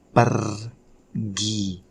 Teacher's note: The tip for you probably, how can you pronounce r sound, is just by try to like vibrate your tongue. So you put like your tongue up and vibrate it, shake it.